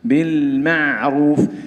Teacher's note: عدم تفخيم الميم والعين لمجاورتهم حرف الراء المضموم